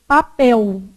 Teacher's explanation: O L, ele pode ser pronunciado com som de U. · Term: L vocalizado